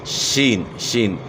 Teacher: پست آواز کے ساتھ اس طرح کے منہ کے اندر اس کی آواز پھیل جائے · ادا کرنا ہے شین کو اپ نے سخت ادا نہیں کرنا زبان کے درمیان تعلق کے ساتھ لگتا ہے شین کی دائیگی میں